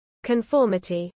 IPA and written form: kənˈfɔɹməti (conformity)